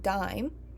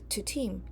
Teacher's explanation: We see that the VOT is much shorter, relatively speaking, compared to team